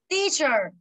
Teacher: Là teacher, trọng âm rơi vào từ teach cho nên nó sẽ là ơ ngắn